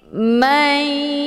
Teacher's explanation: nunnya dileburkan ataupun dimasukkan ke dalam huruf ya dengan cara ditekan kemudian ditahan lebih kurang 2 kali ketukan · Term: idgham bi ghunnah